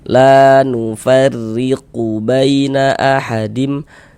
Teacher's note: Baris miring di bawah huruf ini namanya harakat kasrah atau biasanya disebut dengan tanda baca kasrah atau harakat kasrah atau ee baris kasrah. Maka huruf ro ini kita baca tarkik. Ah, kita baca tipis.